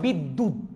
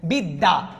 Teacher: পরে শব্দের মাঝখানে অতবা শেষে থাকলে দ্বিতীয় উচ্চারণ হচ্ছে যেমন বিদ্যুত দটা দুইবার উচ্চারণ হচ্ছে